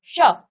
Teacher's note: आपकी जीव तालू को स्पर्श करती है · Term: तालव्य स